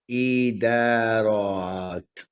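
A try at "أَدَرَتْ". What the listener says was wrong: So say the first sound again. you said e, you said ida, right?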